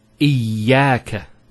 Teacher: Notice the ya gets a double vowel because of the shadda there.